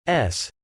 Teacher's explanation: we are dealing with a fricative which is just another way of saying that the sound is made through friction and can be extended in time · the basic symbol with vertical stroke pointing to the top, named Sule, is an alveolar fricative